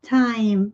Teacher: Aqui, né, nós temos esse T em inglês que é aspirado. O T é diferente no inglês e no português, porque no inglês a gente empurra, né, o vento, né, o ar.